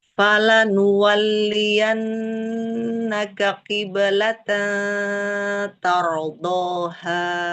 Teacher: dia tidak ada penekanan di nun karena berhadapan dengan damir anta pengecualian ketika ee berhadapan dengan damir antaka di situ kita datar saja.